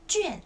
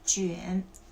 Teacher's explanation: One is 卷 4th tone. Second is 卷 the 3rd tone.